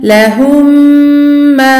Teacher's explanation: Et on passe directement à celui qui porte la shadda en fusionnant les deux. Et du coup la runa va être très longue. Aussi longue que celle du noun mouchaddada. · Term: idram d'assimilation